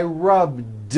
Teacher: all I did was was add a voiced D sound at the end rub it's not rubbed with an unvoiced T it's rubbed like